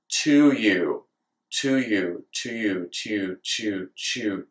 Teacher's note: we start out with the hard T sound in to, but as we add the y sound from you, we are slowly pulling the t sound back to the palatal region in order to make a ch sound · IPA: /t/→/tʃ/